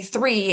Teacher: it's the one that Israelis usually defer to either a Z or a T or a D